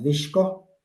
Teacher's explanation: S has been substituted with the she sound